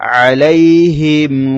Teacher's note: আলাইহিম মিম সাকিনের পরে ওয়াও এসেছে তাই এখানে মিমটা স্পষ্ট করতে হবে · মিম সাকিনের ইজহার হবে মিম সাকিনটা স্পষ্ট করে পড়তে হবে গুন্না হবে না